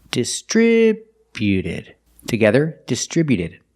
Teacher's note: Put the stress on the second syllable only.